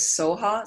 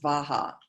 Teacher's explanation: the Tibetans they weren't able to pronounce V. So that syllable often is Soha. Sometimes it's pronounced Svaha.